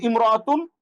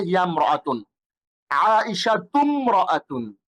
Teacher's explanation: ইমরাতু শব্দের আগে অন্য শব্দ যদি আসে, তাইলে আলিফটি শুধু লেখায় আসে, উচ্চারণে আসে না। যেমন হিয়ামরাআতুন, সে একজন মহিলা, আগের যেই হরফটার সাথে মিমটা আটকে যায়, আলিফটা পড়ে যায়।